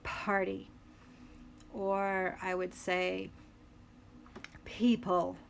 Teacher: English and Hindi for example in American English we tend to pronounce the letter P as an aspirated sound which means that there's a bit of a puff of air a little huh after it